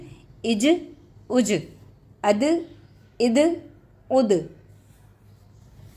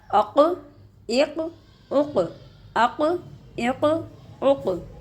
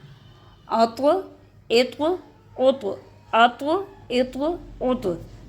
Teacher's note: آواز لوٹتی ہوئی محسوس ہوگی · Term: حروف کلکلہ